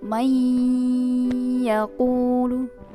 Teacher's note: untuk lama dengungnya itu 3 alif ya. Bisa dihitung menggunakan jari sejumlah 3. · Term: idgham bi gunnah